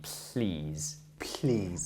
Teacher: the tongue goes up to the gum Ridge so behind your teeth and the tongue is thin so the air can go around the sides of the tongue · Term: voiceless alveolar lateral fricative